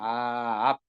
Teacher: 두 입술이 닫혀서 입으로 숨이 안 쉬어져요